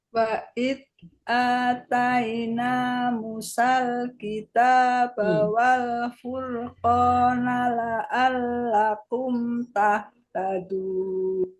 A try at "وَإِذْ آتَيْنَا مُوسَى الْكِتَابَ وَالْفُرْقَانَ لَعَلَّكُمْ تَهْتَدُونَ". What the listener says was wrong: Ya, Musanya kecepatan tadi, Bu. Musal.